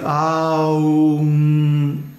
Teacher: it's like the sound moves up your nose and it becomes more and more nasal sounding as it goes